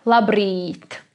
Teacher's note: you have to make it like 2.5 times longer than the ordinary I